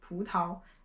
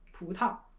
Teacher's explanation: sometimes people say it in the second tone here, 葡萄, and sometimes people use a neutral tone